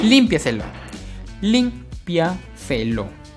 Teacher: Lleva la mayor fuerza de voz en la transantepenúltima sílaba. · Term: sobresdrújulas